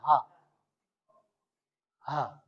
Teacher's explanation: जब हवा ये तेजी से आप फेंकते हैं मुख से, उसमें रगड़ देती है अलजीवा में, तब निकलता है हा